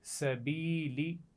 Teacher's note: با کے نیچے زیر ہے اور اس کے بعد یا ساکن آ گئی، تو میں نے اس کو کھینچ کر پڑھا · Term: یا مدہ